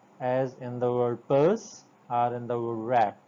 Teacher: You will first join your lips, build a pressure inside, and then release the pressure in a sort of mini explosion. The per sound, as in the word purse or in the word wrap.